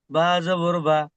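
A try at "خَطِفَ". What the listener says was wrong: বা নয়, ফা। খতি ফা, তাড়াতাড়ি পড়তে হবে, আপনি খতি টান দিয়ে ফেলেছেন।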